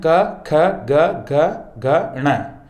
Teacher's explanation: अ, आ, का वर्ग, विसर्ग तथा ह ये कंठ वर्ग में आते हैं साथियों। इनका उच्चारण कंठ की सहायता से किया जाता है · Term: कंठ वर्ण